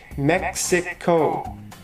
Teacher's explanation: Mexico has three syllables Mexico the stress is on the first syllable